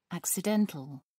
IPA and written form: ˌæksɪˈdɛntəl (accidental)